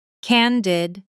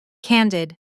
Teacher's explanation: Stress on the first syllable, and the second syllable is quick and light. Did, almost swallowed. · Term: natural stress pattern